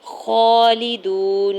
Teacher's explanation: خا کے اوپر کھڑی زبر ہے، دو حرکت کھینچ کے ادا کریں گے ، لام کی زیر کو بغیر کھینچے ہوئے ادا کرنا ہے،